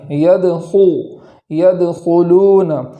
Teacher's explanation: خا کو پور پڑھیں گے، موٹی آواز کے ساتھ پڑھیں گے۔